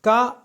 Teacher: क अघोष अल्प प्राण और कंठ है